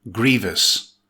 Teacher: it's an adjective with two syllables, stress the first syllable. · Note: GREE-vus not GREE-ve-us with three syllables.